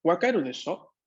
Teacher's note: El desho, con forma en entonación ascendiente, en una entonación interrogativa, tiene esta misma función de la partícula ne.